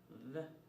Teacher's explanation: The sound the is made with the tongue between the teeth.